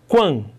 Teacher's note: Quando, na primeira sílaba eu tenho quan, semivogal antes de vogal, a escadinha está subindo, crescente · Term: ditongo crescente